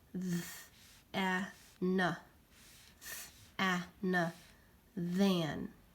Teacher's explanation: TH makes my vocal cords vibrate, so that means it's a voiced sound · Do you hear your vocal cords vibrate when you say the word than?